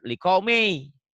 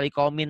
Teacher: Tanwinnya jangan dibaca liqaumin lagi tapi liqaumi. Masukkan ke ya liqaumi yu'minun.